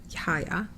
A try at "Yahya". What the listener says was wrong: He says you have to say the H. Yahya. Yeah, I mean that's how he pronounced it.